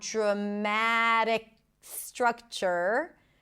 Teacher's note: The C sound connects to the S. No breaks there.